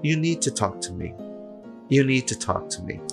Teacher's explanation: O D vai pro saco, vai passear, vai fazer qualquer negócio. O T eu vou juntar com o último som que eu tiver.